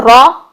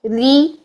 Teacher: موٹی را کے لیے ہم زبان کی جڑ کو اوپر اٹھائیں گے اور باریک را کے لیے ہم زبان کی جڑ کو نیچے رکھیں گے